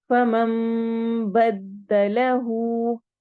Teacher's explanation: फमम में हम इकलाब कर रहे हैं। इकलाब क्या होता है, नून साकिन के बाद या तनवीन के बाद बा आ जाए तो हम वहां पर नून की आवाज को मीम से बदल देते हैं